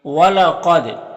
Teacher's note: دال کو ادا کرتے وقت اس کی آواز اپنے مخرج سے ٹکر کھا کر الگ ہو جائے گی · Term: قلقلہ